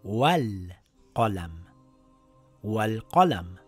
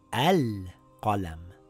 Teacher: When we are reading these two words together, we have to drop the Hamzatul Wasl. It now reads Wal Qalam.